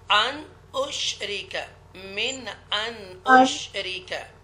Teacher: Don't make a guna here because we make a izhar here, because after noon sakina hamza is coming.